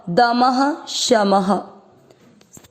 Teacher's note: म में अ की मात्रा इसलिए यहां पर भी विसर्ग को पढ़ेंगे ह